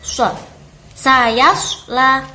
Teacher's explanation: kalau shad itu ada bacaan yang mirip dengan peluit. Jadi cara melafalkan shad itu mirip peluit shad.